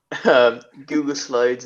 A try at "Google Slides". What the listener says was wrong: you said I heard you say Goobit, not Google.